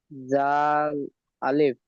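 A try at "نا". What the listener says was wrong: জাল নয়, নুন আলিফ। এখানে জাল দেখেন, দাল রয়েছে। দাল অক্ষরটি ঠিক এখান থেকে এই পর্যন্ত হবে। এর উপরে একটি নক্তা থাকলে জাল হবে।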